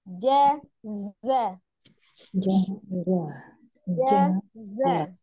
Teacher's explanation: Dan tampakkan sifat as-saghir atau desis di bunyi za.